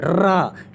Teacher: प्रकंपित व्यंजन रा क्यों होता है? क्योंकि रा को बोलने पर हमारी वायु क्या हो जाती है, हमारी जीभ एक प्रकार से कंपित होती है, रा, यानी कुल मिलाकर के कंपित होती है, ऐसे कुछ होती है।